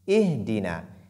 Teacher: Lorsque nous voulons commencer par Ihdina, nous devons lire la lettre Hamza. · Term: hamzatul wasli